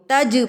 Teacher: اب یہاں پر ہم اس کو ہلا کے پڑھیں گے، جیم کو تج پڑھا جائے گا، تج نہیں پڑھا جائے گا، تج غلط ہے، تج جیم ہلا کر پڑھا جائے گا